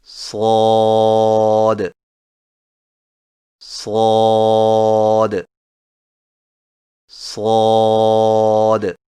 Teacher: صاد کی ادائیگی میں زبان کی نوک کو سامنے والے نیچے کے دو دانتوں کے کناروں سے مضبوطی سے لگا کر اور زبان کے پچھلے حصے کو تالو کی طرف بلند کرتے ہوئے موٹی اور سیٹی جیسی آواز میں پڑھیں